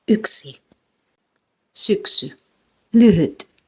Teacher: the tongue is in high front position similar to the i in machine, but the lips are round